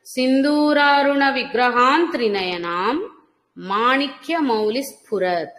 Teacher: సింధూరారుణ విగ్రహాన్ త్రినయనం కలిపేసి త్రినయనం పలికేస్తాం. అక్కడ నకారాన్ని మన సౌకర్యం కోసం నకారంగా అనుస్వరాన్ని మార్చుకున్నాం, వెంటనే త్రినయనాల్లోని తకారం తీసేసుకున్నాం.